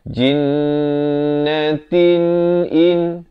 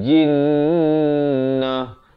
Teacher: Kemudian kalau kita nak waqaf, ta ni ditukarkan kepada bunyi ha. Jinnah. Tapi kalau kita nak wasal, dia kekal bunyi ta.